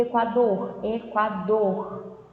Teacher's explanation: equador somente percebe que se prolonga no final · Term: sílaba tônica